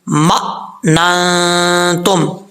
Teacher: میم کے بعد حمزہ آ رہا ہے ساکن، یہاں پہ جھٹکا دے کے پڑھیں گے